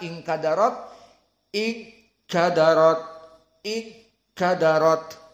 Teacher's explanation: ikhfa kita benar yang ada gunahnya karena ikhfa itu harus gunah makna gunah makhrajnya keluar dari hidung kita tutup hidung kita lalu kita baca inkadarat in kadarat in kadarat